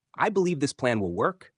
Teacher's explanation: When making a statement such as, "I believe this plan will work," let your voice fall gently, signaling confidence without sounding aggressive.